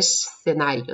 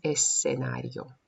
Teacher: В слове «сценарио» здесь не удваивается, не выкидывается, ни одна, ни вторая буква, которая «с», «th», мы аккуратненько произносим. Сначала «с», потом межзубная «th»